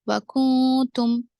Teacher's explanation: کاف اور نون ساکن کے بعد تا ہے تو اس وجہ سے یہاں اخفا ہوگا